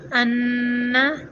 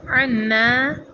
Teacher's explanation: حمزہ کی آواز تھوڑی سی جھٹکے کے ساتھ نکلتی ہے، جبکہ عین کی آواز بالکل نرم اور باریک نکلتی ہے